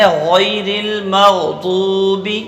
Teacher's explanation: تو مغضوبی میں ضاد کو ایک الف کے برابر کھینچنا ہے، باقی کسی حرف کو نہیں کھینچنا ہے